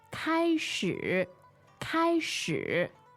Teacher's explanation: that's first tone 开 and third tone 始